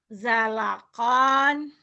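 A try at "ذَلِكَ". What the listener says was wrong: Jangan. Zalakon. Zalakon, nggak ada yang panjang. Kecuali nanti kalau sudah baca Quran dihentikan. Zalako. Mad iwad 2 patah dibaca 1 juga dihentikan. Di sini dibaca ada apa adanya berarti pendek. Zalakon.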